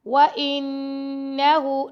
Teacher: نون پر ہم غنہ کریں گے، ہا کو 2 سیکنڈ تک لمبا کریں گے